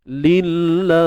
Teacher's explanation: kalimah Allah, sekali lagi kita nipiskan. Nipis je, sebab apa? Sebelumnya berbaris bawah, kan?